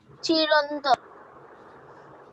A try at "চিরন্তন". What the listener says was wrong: এটা র হবে না, এটা ন হবে, চিরন্তন। চিরন্তন ন হবে, কেমন?